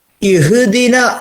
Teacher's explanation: ഹാ ന്റെ ഉച്ചാരണം ശരിയായിട്ട് കിട്ടാൻ നമ്മൾ നമ്മുടെ തൊണ്ടയുടെ അല്ലെങ്കിൽ കഴുത്തിന്റെ ഏറ്റവും താഴെ നിന്ന് വരുന്ന ഒരു അക്ഷരം തൊണ്ടയുടെ ഏറ്റവും താഴെ നിന്ന് ഹളീ പിന്നെ കഴുത്തിന്റെ ഇങ്ങനെ ഇവിടെ ഏറ്റവും താഴെ